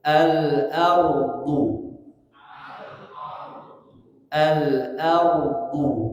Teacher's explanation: huruf ro tebalkan karena dia termasuk tafkhim